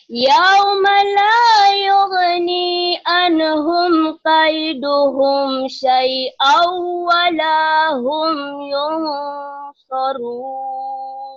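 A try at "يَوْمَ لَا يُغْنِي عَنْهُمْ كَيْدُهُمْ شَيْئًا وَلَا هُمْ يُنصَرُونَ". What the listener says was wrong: Shinnya belum mantap ya. Yauma la yughni anhum kaiduhum syai'an wa lahum yansarun.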